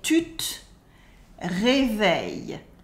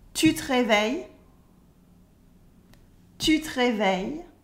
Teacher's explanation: And we remove the E in te.